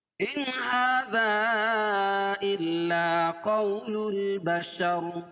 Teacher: ان هذا یہاں بھی اظہار حلقی ہوگا، یعنی ظاہر کر کے پڑھنا پڑے گا